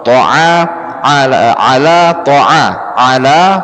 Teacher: Huruf a itu letaknya sama kayak hamzah, tetapi dia lebih ditekan. Ya, ada sedikit tekanan di sini. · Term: huruf ain